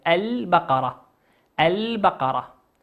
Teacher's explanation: لام ساكنة أتى بعدها حرف الباء، والباء من حروف اللام القمرية تظهر كما هي